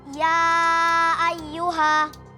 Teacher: Karena huruf mad alif bertemu dengan hamzah di lain kata, maka dibaca panjang 4 atau 5 harokat. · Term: Mad far'i